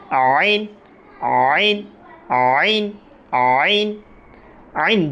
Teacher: আমরা যখন বলবো তখন হলকের মাঝখান থেকে একটু চিপে বলব পড়াটা একটু চিপে যদি বলি আমাদের আইনটা সঠিকভাবে উচ্চারণ হবে কিভাবে